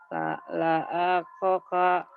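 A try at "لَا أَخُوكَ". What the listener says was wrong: Nggak ada yang panjang. Kho. Bukan lakoka. Kho.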